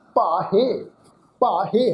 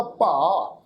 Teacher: ਹਾਹੇ ਦੀ ਜਿਹੜੀ ਸਿਆਰੀ ਦੀ ਮਾਤਰਾ ਵਾ ਉਹ ਇੱਥੇ ਸਾਇਲੈਂਟ ਰਹੇਗੀ।